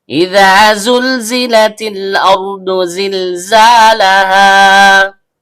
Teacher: Zai, ujung lidah bertemu dengan gigi seri bawah.